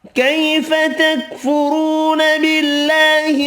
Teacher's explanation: تکفرون را پیش کی وجہ سے پر پڑھیں گے، واو مدہ ایک الف کی مقدار میں کھینچ کر پڑھیں گے۔